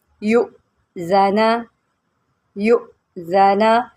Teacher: حمزہ جو ہے یہ ساکن ہے، اس کو ہم نے جرک دے کے پڑھنا ہے